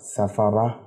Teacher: گول تا جو ہے وہ ہا بن جائے گی۔ گول تا کا قانون ہے، اصول ہے کہ جب اس پہ وقف کیا جاتا ہے تو وہ ہا بن جاتی ہے۔